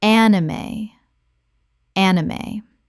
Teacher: 3 syllables with the E pronounced at the end.